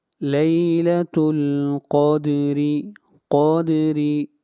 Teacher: قاف کو موٹا پڑھیں گے، قاف حروف مستعلیہ میں سے ہے اور را کو باریک پڑھا جائے گا، را کے نیچے زیر ہے